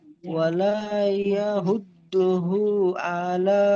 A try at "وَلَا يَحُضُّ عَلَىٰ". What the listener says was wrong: হু নেই, হু নেই, ওয়ালা ইয়াহুদ্দু, ইয়াহুদ্দু আলা।